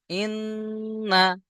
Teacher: নুনের উপরে তাসদীদ গুণনা করা ওয়াজিব। ইন, নুন জাবার না, ইন্না।